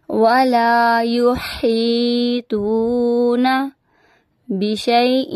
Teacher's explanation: ولا یحیطون بشیء، یہاں پہ ادغام کا گنہ ہو رہا ہے